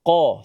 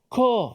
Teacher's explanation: Qaf dengan tebalnya qa, sebut qa. Jangan sebut ka, bukan ka. Itu dah sebab ada angin.